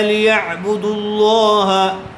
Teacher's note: عین کو حلق سے نکالیں گے، عین کو اچھی طرح سے ادا کیجیے